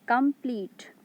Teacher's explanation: come is unstressed and pleat is stressed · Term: iambic pattern